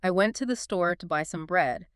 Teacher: every syllable gets roughly the same amount of time, the same weight, like a metronome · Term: syllable timed